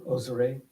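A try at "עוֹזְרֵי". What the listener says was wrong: Ozre. Yes.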